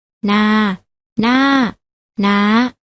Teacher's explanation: เมื่อเราผันด้วยวรรณยุกต์เอกจะออกเสียงโทและถ้าผันด้วยวรรณยุกต์โทจะออกเสียงตรี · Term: อักษรต่ำ